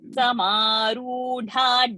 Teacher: Dha is also mahaprana and dirgha sound. So over there, everything will have to be very slow.